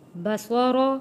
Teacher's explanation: بصر صاد بھی موٹا پڑھنا ہے، را کو بھی موٹا پڑھنا ہے، بصر۔ ثم ارجع البصر کرتین، را کے اوپر تشدید ہے، سختی کے ساتھ تھوڑا رک کر ادا کرنا ہے تشدید والے حرف کو۔